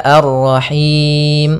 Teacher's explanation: Panjangnya yaitu kita boleh panjangkan dua harakat, boleh empat harakat, dan boleh pula enam harakat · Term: mad arid lis sukun